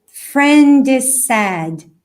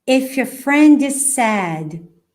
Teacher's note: So, if your, repeat, if your friend is. Só que esse S aqui do is, ele meio que se mistura com S de sad. Então fica friend is sad.